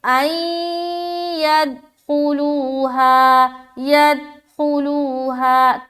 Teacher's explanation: कलकला नहीं हुआ, क्योंकि दाल की मखरज पर उनकी आवाज़ अटक जा रही है